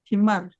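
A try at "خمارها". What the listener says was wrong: Khimar atau himar? Kho atau ha? Kalau ha, himar artinya keledai. Kalau kerudung, khimar. Khimaroha. Iya, khobar titik.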